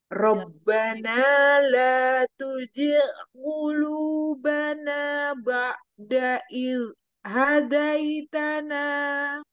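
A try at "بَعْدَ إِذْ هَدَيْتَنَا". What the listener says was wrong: Ba'da, jangan ba'da seperti Hamzah. Ba'da iz hadaitana.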